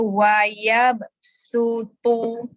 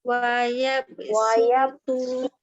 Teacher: Jangan tebalkan huruf shad. Nipiskan bunyi su tu sebab kita pakai sin. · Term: sin nipis